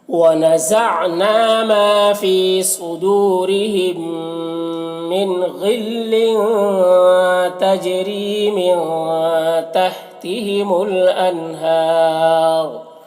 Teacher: اور یہاں پر وقف کی صورت میں را کا پیش سکون سے بدل جائے گا تو را کو پر پڑھیں گے، اور وقف کی صورت میں مد عارض وقفی بھی ہوگا.